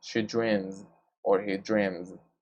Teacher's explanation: And the last one, the last example is the word dream, or also the verb dream. So the M sound, dream, it vibrates. So it means that that S should be pronounced as Z.